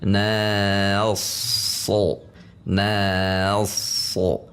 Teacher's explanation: Na relax, masuk ke sod tegang. Na pangkal lidah relax, sod pangkal lidah tegang. Jika dilambatkan, na relax, na masuk ke sod langsung tegangkan.